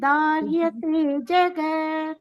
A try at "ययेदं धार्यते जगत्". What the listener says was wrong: ಯಾಯೇದಂ ಅನ್ಬೇಡಿ, ಯಯೇದಂ ಯಯೇದಂ. ಯಾಕೆಂದ್ರೆ ದೀರ್ಘ ಇಲ್ಲ, ಅದಕ್ಕೋಸ್ಕರ.